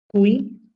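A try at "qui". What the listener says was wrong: না, এটা কুই না, এটা হবে কি। কিউ এর পরে ইউ আসলে এটা মোস্ট অফ দা কেসেস কি ইউটা সাইলেন্ট থাকে, ঠিক আছে, সাইলেন্ট থাকে। সো তাহলে কি হবে? হু এবং আই কে আমরা কি বলি? ই, ই, রাইট?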